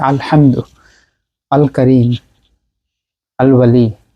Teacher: এখানে আমরা লামটা স্পষ্ট করে পড়ছি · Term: লামে কমরিয়া